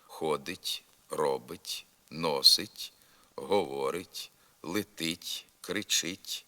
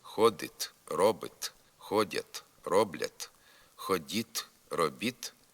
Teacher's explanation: у дієслівних закінченнях третьої особи однини й множини теперішнього часу та другої особи множини наказового способу звук т вимовляється м'яко